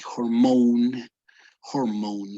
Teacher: this O sounds like as if you had an O followed by a U. It's like hormone, hormone.